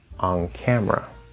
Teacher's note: instead of doing an N here, on camera, which you could do if you clearly enunciate, instead we're going to do this back N, and then release the K, on camera.